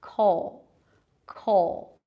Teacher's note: And then because of the dark L, it feels like the middle vowel, basically it's a cup sound, like in the word cup. Because of the dark L, it sounds almost like an O sound